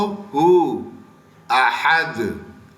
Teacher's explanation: ہا کے ساتھ درمیان حلق سے